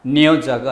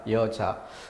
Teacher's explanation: 그 앞에 니은은 발음이 불편하다. 그래서 그 니은을 꺼리고 탈락해버리는 것이죠.